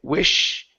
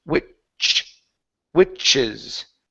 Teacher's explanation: with the ch, it starts at the top of your mouth, and we say ch, and it pushes down.